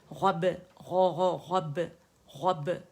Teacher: با باریک ہے، غین موٹے